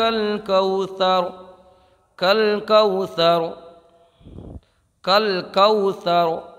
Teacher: یہ واو لین ہے، اس کو بغیر کھینچے، بغیر جھٹکا دیے نرمی سے معروف پڑھیں گے۔